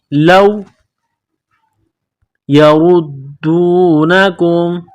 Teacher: र के ऊपर पेश है रा को मोटा करना है र को दाल के साथ मिलाना है दाल के ऊपर तसदी